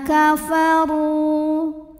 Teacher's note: Huruf ra dibunyikan secara tafkhim karena berbaris di atas barisnya dhammah. Maka cara bacanya ditebalkan. Kafaru. Ru mad tabi'i zahiri karena ada waw sukun didahului baris dhammah.